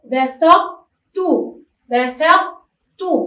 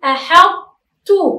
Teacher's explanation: أنا لم أنطق الطاء وإنما أبقيت على صفة الطاء وهي التفخيم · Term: صفة التفخيم